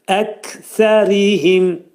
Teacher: Kəf hərfinin məxrəci dilin sonu və dilçəyin axırındadır.